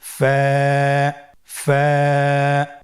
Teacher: ফায়ের মাখরাজ হলো নিচের ঠোঁটের প্যাড সামনের উপরের দুই দাঁতের আগার সঙ্গে লাগিয়ে উচ্চারিত হয়।